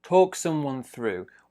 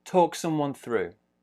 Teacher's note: we've got a smaller stress on talk, bigger stress on through.